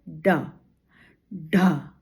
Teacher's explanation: जीभ ऊपर तालू में लगती है और फिर एकदम झटके से नीचे आती है और हवा निकलती है और इनका उच्चारण हो जाता है।